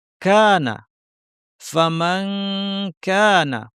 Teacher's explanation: আরবিতে এটাকে শক্ত করে বলা হয় কা এবং সাথে একটু বাতাস থাকে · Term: কাফ